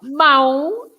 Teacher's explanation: Mão, ow, ow. More of ow, a nasal sound. Ow, ow. It's more open.